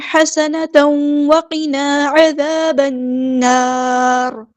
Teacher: سین کی سیٹی ہم نے واضح کرنی ہے